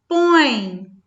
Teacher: eu tenho uma vogal que é pronunciada de maneira mais forte e tem uma semivogal que está acompanhando, que está juntinho com essa vogal. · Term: ditongo